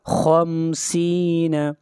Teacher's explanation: خا حروف مستعلیہ میں سے ہے، خا کو موٹا پڑھا جائے گا